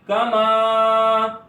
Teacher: کما میں الف سے پہلے زبر ہے, یہاں پر الف مدہ ہو رہا ہے, اس کو ایک الف اتنا لمبا کریں گے